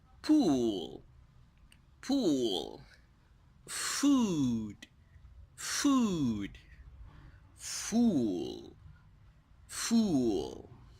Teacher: so it's a long ooh the lips are closed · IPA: /uw/